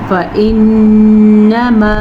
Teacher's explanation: نون کے اوپر شد ہے تو غنہ ضرور ادا کیجیے گا